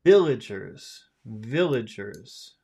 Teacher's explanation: in that word villagers, which syllable has all of the power? Village. First syllable.